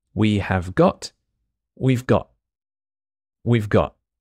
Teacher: the letter T at the end of got just disappears